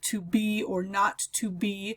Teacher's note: a two syllable foot a light followed by a heavy · So an example of an iamb would be, for example, the famous line in Hamlet, "to be or not to be," is we've got a set of three iambs there. To be, we have the light followed by a heavy stress on the syllable